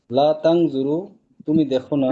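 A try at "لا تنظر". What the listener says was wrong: না, লা তানজুর, দেখেন এখানে কিন্তু যজম না দিলে শব্দ হবে না, যজম দিতে হবে শেষে।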